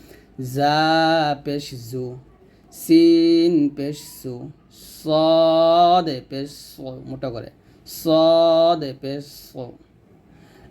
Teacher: আমরা জিহ্বার আগা নিচে দাঁতের সামনে নিচে দাঁতের মাঝে লাগিয়ে তিনটি অক্ষর উচ্চারণ করব